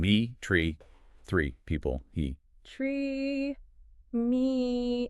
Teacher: My mouth is wide, it's tense, it's almost like a forced smile. Exactly. It's a long, high-tension sound.